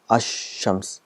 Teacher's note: when Al comes with Shams the sound of lamb becomes silent it becomes as Shams so what happens is the AL is · lamb becomes silent it becomes as Shams so what happens is the AL is written it becomes silent and the sound of shen is doubled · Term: silent lam